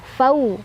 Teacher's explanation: ada harf lin atau huruf lin karena ada waw sukun sebelumnya fathah, dibacanya dilunakan saja